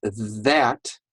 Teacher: So when I say that, do you see how my tongue comes out that see that? You can see my tongue comes out between my teeth.